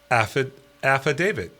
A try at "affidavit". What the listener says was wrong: You see, I'm hearing a D at the end as you're pronouncing it.